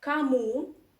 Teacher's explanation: o unstressed you pronounce as a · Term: Russian reduction law